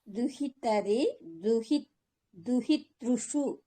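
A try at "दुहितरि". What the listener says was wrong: షు పదం కొద్దిగా క్లియర్ గా ఉచ్చారణ.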